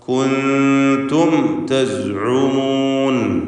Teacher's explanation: സക്കിനത്താമീം ഇൽഹാർ ഷഫവി നൽകി മണിക്കാതെ വെളിവാക്കുക